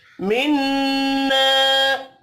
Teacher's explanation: نون مشدد پر بھی غنہ ہوگا، الف مدہ ایک الف کے برابر کھینچ کر پڑھا جائے گا